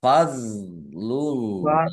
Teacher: dipantulkan ya jangan di Jangan dibaca Fadlu ya tapi dibaca fadlullah Allahnya dibaca tebal karena harakat di depannya domah